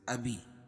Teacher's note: یا ساکن سے پہلے زیر ہو تو یا مدہ اس کو 1 الف کے برابر کھینچ کے پڑھیں گے